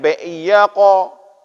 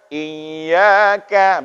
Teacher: Kalau qaf tadi tebal, maka ka ini tipis